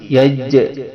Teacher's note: sifat jim ini adalah jahr, yaitu tidak berhembus napas ketika diucapkan, napasnya terkunci. Yaj, dia terkunci napasnya, disebut dengan sifat jahr.